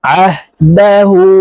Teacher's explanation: হার উপরে উল্টা পেশ আছে তাই গোল করে এক আলিফ টেনে পড়বো